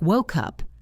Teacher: The K in woke moves over to the U in up. It sounds like woke up. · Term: linking sounds